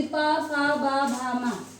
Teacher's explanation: जो हमारे ओठ हैं ऊपर नीचे के दोनों एक दूसरे को स्पर्श करते हैं। इस कारण इनको स्पर्श व्यंजन कहा जाता है।